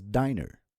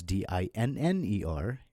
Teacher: But then when you add another N in between, so it becomes D-I-N-N-E-R, and since N is a consonant, so it becomes a double consonant with double N, and the I sound is shortened, so it becomes dinner instead of diner.